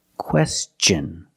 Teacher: When TION is after an S, then it's pronounced differently. It's pronounced with the ch sound, the hard ch sound like chicken and change. With words like this, question.